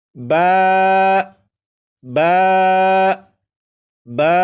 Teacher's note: با کو 1 الف کے برابر کھینچ کر پڑھیں گے، جیسے با با با، 4 مرتبہ آپ۔